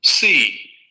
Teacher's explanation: Vean cómo la vocal es un pelín más larga que la nuestra en español